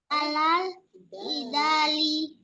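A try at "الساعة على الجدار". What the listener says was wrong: Nah, kalau ri di sini diganti jadi li, al-jidali, maka artinya adalah debat, perdebatan.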